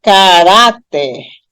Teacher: quando eu pronuncio caráter, a sílaba mais forte é a penúltima, e não a última. Não é caráter, é caráter.